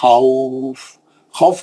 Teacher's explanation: मद्दे लीन आरिस को आप 4 हरकतें भी पढ़ सकते हैं, क्योंकि लीन को इतना लंबा नहीं करना है। खौफ 4 हरकत। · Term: मद्दे लीन आरिज